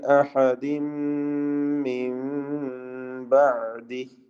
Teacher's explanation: തൻവീനിനെ പൂർണ്ണമായും മീമിലേക്ക് ലയിപ്പിച്ച് മണിക്കണം. മിൻ ബഅദി സാക്കിന നൂൻ ഇഖ്ലാബ് ചെയ്ത് സാക്കിന മീമിന്റെ ശബ്ദം നൽകി മാറ്റി മണിച്ചുകൊണ്ട് ഓതുകയും വേണം.